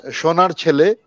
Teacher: ও কারটা ঠিক মতো আসেনি, একটু উ এর দিকে চলে যাচ্ছে, সেইটা খেয়াল রাখতে হবে।